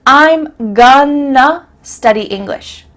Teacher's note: That word to simply becomes a.